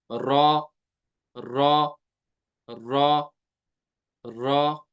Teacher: जुबान की नोक लगती है तालो की साथ तो अदा होता है र अब रह गया त दाल और